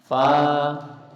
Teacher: Ketika bertemu dengan alif, maka fa-nya menjadi panjang. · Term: alif mad